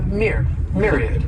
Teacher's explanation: This word has 3 syllables and the stress is on that first syllable. That MYR sounds like a myriad.